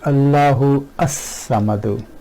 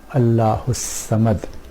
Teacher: For example, if this was hamzatul qata'a, we will say Allahu as-samadu, and because the hamza of lam tarif is connecting hamza, hamzatul wasl, we do not pronounce it, and we recite Quran Allahu samad.